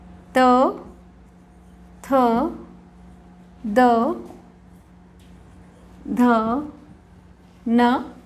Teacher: मूर्धा से जिन वर्णों का उच्चारण होता है ट, ठ, ड, ढ, अण, ये मूर्धा वाले वर्ण हैं। अब ऐसे वर्ण जिनसे दांत से जब जीभ टकराती है तब इनका उच्चारण होता है